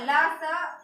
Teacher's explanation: तो ल और स का उच्चारण स्थान कहाँ होगा, दंत हमारा हो जाएगा